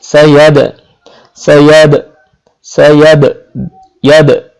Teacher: দার একটা গুণ আছে, দাকে বলা হয় কলকলার অক্ষর। দাল উচ্চারণের সাথে সাথে একটা প্রতিধ্বনির মতো, মানে ফিরে আসবে এরকম একটা আওয়াজ হবে, ইয়াদ, দা এমন ভাবে উচ্চারণ হচ্ছে যে দাটা উচ্চারণ হওয়ার সাথে সাথে সেটা প্রতিধ্বনিত হচ্ছে, ইয়াদ ইয়াদ সাইয়াদ, এটা হচ্ছে এই অক্ষরের গুণ।